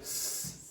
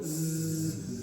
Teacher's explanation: So when you go s, there's no vibration. When you go z, you can feel it.